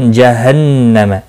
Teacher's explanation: नून मुशद्दद पर गुन्ना होगा, मीम साकिन रहेगा।